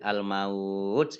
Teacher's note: sukun karena waqaf menjadi Al maut ini bacaan Mad layyin maut ini bacaan namanya Mad layyin dibaca panjang 2 harokat